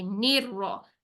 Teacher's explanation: निर रहीम की भी नून की जो जेर है इसको फिर से हम बारीक रखेंगे